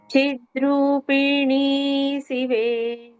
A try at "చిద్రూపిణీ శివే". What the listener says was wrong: చిద్రూపి ఒక దెబ్బలో. సో చిద్రూపి అనేది అక్కడ కరెక్ట్గా ఈక్వల్గా డివైడ్ అయి ఉంటుంది. చిద్రూపి నీ శివే. నీకు ఒకటి దీర్ఘం ఎక్కువ ఉంటుంది.